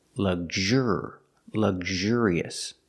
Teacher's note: the adjective luxurious, putting the stress on the second syllable.